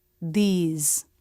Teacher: When it's in an unstressed, quick word like these or the tongue tip doesn't have to come through the teeth. It can press behind the teeth. Make sure the tongue isn't at the roof of the mouth or pointing down, but pressing right in the middle, where the teeth come together. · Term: voiced TH